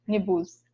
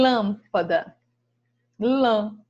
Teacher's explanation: quando esse acento circunflexo ele aparece na palavrinha ela fica com som mais fechado